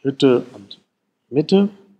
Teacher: Und dann haben wir für die geschlossene Vokale wird auch oft hohe vordere Vokale gesagt, also hoch. Neben geschlossen, dann gibt es fast geschlossen, das ist dieses I und Ü in Hütte und Mitte.